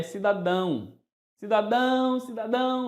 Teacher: cidadão é a sílaba forte destas palavras recai na última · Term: oxítona